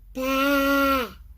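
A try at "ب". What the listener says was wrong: You're reading ba like it's got a fatha. This doesn't have fatha. This is ba, the green one. So what we're trying to do here is just being able to read the letters, yeah? We're not reading together. It doesn't have fatha. We don't say ba, okay? This is ba, alif.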